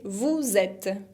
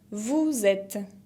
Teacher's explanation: No pronuncio la ES final y hago la liaison, la unión entre vous y et porque uno termina por consonante y otro empieza por vocal.